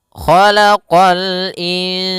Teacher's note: Kha isti'la, huruf kha pangkal lidah kita terangkat.